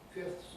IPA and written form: fɪfθs (fifths)